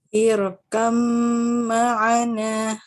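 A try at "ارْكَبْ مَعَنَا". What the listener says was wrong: Nah, roknya tebalkan lagi karena rok sukun sebelumnya kasroh karena sebab di sini karena sebabnya hamzah wasol ya. Jadi rok sukunnya dibaca tafkhim, dibaca tebal. Irkam ma'ana.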